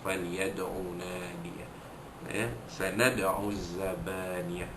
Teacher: Ayat yang ke-18, sanada'u zabaniyah, sanada'u, sama macam falyad'u, dal mati di tengah kalimah, hukum dia qalqalah surah, dilantunkan bunyi dal mati itu dengan kecil sahaja, dengan bunyi lantunan kecil sahaja